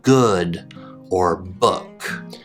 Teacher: your tongue will be low and in the back of your mouth, and your lips should look something like this. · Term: short double O sound